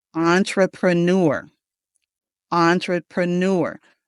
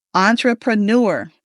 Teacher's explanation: We got the emphasis on the first syllable and the last syllable.